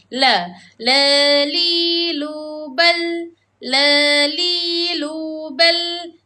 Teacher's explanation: Makhraj lam ini terletak di lidah kita apabila hujung lidah kita bertemu dengan langit bahagian depan. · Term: huruf lam